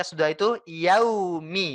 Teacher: waau yang disukun maka kesempurnaannya adalah dengan cara iu ketika kita sudah bisa mendorong bibir kita hingga manyun